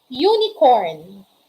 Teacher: But when we are going to observe and hear the sound, the initial sound, it starts with the sound y, not u. Okay? Y. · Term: consonant sound